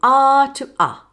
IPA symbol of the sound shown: ɑː⟷ʌ